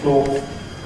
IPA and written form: klɔːθ (cloth)